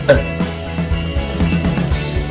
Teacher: Com pronúncia mais breve e relaxada que os outros sons, o átono mais importante em inglês é o ligeiro A, chamado schwa sound.